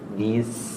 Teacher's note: Sinnya panjang karena sukun, jadi lebih panjang ketimbang yang huruf berharakat sebelumnya di bi-nya.